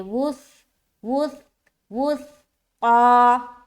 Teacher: سا میں نرمی کے ساتھ ادا کریں گے بغیر سیٹی کے